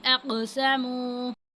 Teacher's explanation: قوف جو ہے یہ حروف قلقلہ میں سے، یہاں پہ ہم قلقلہ کریں گے